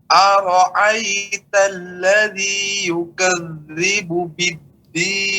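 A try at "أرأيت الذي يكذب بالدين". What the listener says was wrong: Kafnya, Pak. Kafnya buka ya. Ka, bukan yukaz, tapi yukaz ka. Ka, harus ada anginnya.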